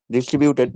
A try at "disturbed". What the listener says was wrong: Stop, stop. It's disturbed. Disturbed by the business. Okay, not distributed, but disturbed.